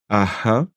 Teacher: Imagine que tu vas prononcer aha, aa, avec un H entre les deux A. Ici, tu vas déjà essayer d'aspirer un petit peu ce H. Aha, le début de ta langue va venir un petit peu coller, se rapprocher du palais vers le haut.